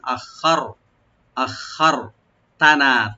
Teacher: নুন এখানে তিন আলিফ পর্যন্ত টানতে পারেন, মধ্যে মুনফাসিল